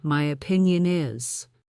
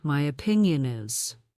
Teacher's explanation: Use strong voice on key words like my and opinion.